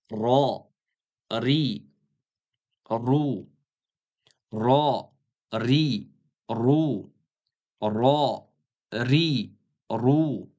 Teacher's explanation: Mana shu qattiq tanglay. Ro deganda ozroq titratib talaffuz qilamiz. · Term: titrash